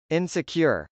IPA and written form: ˈɪnsəkjɚ (insecure)